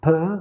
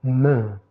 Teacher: Le M, en revanche, il est prononcé avec vibration de cordes vocales. Vous pouvez le sentir.